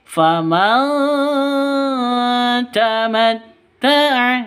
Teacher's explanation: nun mati bertemu dengan ta. Cara bacanya samar didengungkan, siap-siap ke huruf taknya ya. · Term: ikhfa hakiki